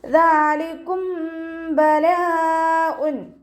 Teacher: മീം സാക്കിനയുടെ നിയമത്തിലുള്ള ഇഖ്ഫാ. മീം സാക്കിനയ്ക്ക് ശേഷം ബാ വന്നാൽ മീം സാക്കിനയെ മറച്ചു വെച്ച് മണിച്ചോതി കൊടുക്കുക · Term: ഇഖ്ഫാഉ ഷഫവി